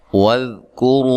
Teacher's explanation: ذال کو نرم ادا کرنا ہلانا نہیں ہے. کاف کو باریک پڑھنا ہے. اور را کو موٹا ادا کرنا ہے. را کے اوپر پیش ہے